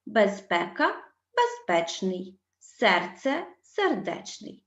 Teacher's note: перед суфіксом н вони змінюються у вимові на ш або ч на письмі в обох випадках на літеру ч безпека безпечний серце